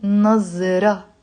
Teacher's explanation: I'm not pronouncing the te marbuta, it's silent.